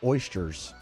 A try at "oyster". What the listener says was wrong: And by the way, you said chur. There's no chur in oyster. It's oyster. oyster. But you mispronounce it. You say oyster. And you're mispronouncing it.